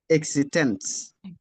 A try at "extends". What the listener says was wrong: Yeah, you're still adding the e.